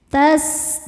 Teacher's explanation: sinnya berdesis ya, ada sifat namanya sofir.